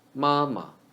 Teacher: the 2nd character of stacked words should be reduced into neutral tone